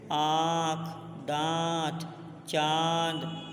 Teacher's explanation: अनुनासिक का उच्चारण करते समय वायु नाक और मुख दोनों से बाहर निकलती है